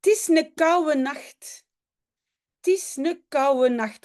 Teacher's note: oude, hein, vieux, oude, est souvent prononcé comme ouwe. En fait, toujours.